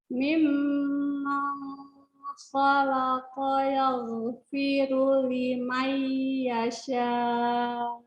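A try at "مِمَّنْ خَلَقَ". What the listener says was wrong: Masih belum dapat. Nun sukun ketemu kho harus lebih jelas. Mimman kho. Nunnya jelas. Ya, gitu. Kan harus idhar.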